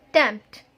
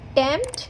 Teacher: Again, sound of P is very slight, very slightly sounded.